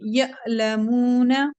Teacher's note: हमजा साकिन है शायद तो यहाँ पे हम झटके से पढ़ेंगे